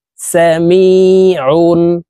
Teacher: আইন হরফকে হলকের মধ্যখান থেকে চাপ দিয়ে উচ্চারণ করে পড়তে হবে